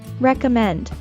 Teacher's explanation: we stress the third syllable in recommend.